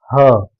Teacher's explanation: गले से हवा निकलने के बाद कोई अवरोध ही नहीं होता है। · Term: कंठ ध्वनि